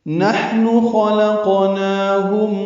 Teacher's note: نحن میں ہا ساکن پہ ہم سے نون کو معروف طریقے سے جلدی ادا کریں گے۔ خلقنا میں خا اور قاف دونوں پر ہیں، لام باریک ہے، قاف پہ قلقلہ ہے، نون کے اوپر کھڑا زبر 2 حرکات لمبا کریں گے۔